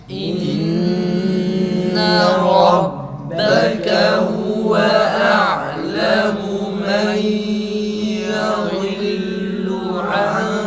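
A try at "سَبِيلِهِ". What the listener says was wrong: Tekrar. Sebileh değil. Sebilih. Tekrar.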